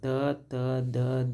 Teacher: ಕರೀತೀವಿ ದಂತ್ಯ ಅಂತಂದ್ರೆ ಏನು ಹಲ್ಲು ಅನ್ನುವಂತದ್ದು ಅಂದ್ರೆ ನಾವು ಉಚ್ಚಾರ ಮಾಡುವಂತಹ ಸಂದರ್ಭದಲ್ಲಿ ನಮ್ಮ ನಾಲಿಗೆಯು ಹಲ್ಲುಗಳಿಗೆ ಸಂಧಿಸುವಂತಹ ಸಂದರ್ಭದಲ್ಲಿ ಉಚ್ಚಾರ ಆಗುವಂತಹ ಅಕ್ಷರಗಳು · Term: ದಂತ್ಯ ಅಕ್ಷರಗಳು